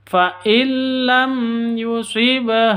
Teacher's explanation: ba mati di sini ada qalqala Sugra